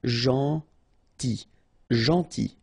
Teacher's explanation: here this final L is not pronounced